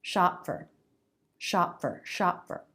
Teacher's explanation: So these are all unvoiced stop consonants. We don't release, we just stop the sound. But the forward motion keeps going, it takes us right into the next word.